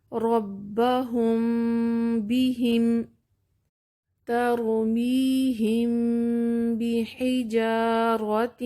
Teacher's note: اخفاء شفوی ادا کرتے ہوئے ہم میم پر اپنے ہونٹ بند کرتے ہیں، پھر اس دوران غنہ کو جاری کرتے ہوئے با کے لیے انہیں الگ کرتے ہیں۔ ایک بات جو غلطی عام طور پر میں نوٹ کرتی ہوں کہ بہت پریشر کے ساتھ میم کی آواز کو زور لگا کر ادا کرتے ہیں، لیکن یہ طریقہ ٹھیک نہیں ہے۔